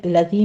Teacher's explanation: الذی میں دال کو نرمی سے پڑھتے ہوئے یا مد ادا کریں گے